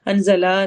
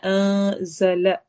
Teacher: لا لمبا نہیں ہوگا، ہمارے ہونٹ زیادہ کھلیں گے نہیں۔